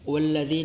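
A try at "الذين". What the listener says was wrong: واو غلط ہے، واو غلط ہے،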